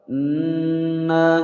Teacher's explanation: Wa inna, wa pendek, in langsung masuk ke huruf nun. Nun bertasydid, ditekan ditahan, 2 harokat. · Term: gunnah musyaddadah